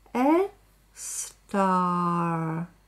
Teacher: Когда говорю в конце а, немножко язык задираю кверху.